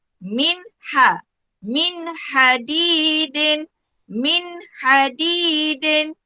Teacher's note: Nun mati bertemu dengan ha. Hukum dia adalah izhar halki. Mesti dibaca dengan terang dan jelas.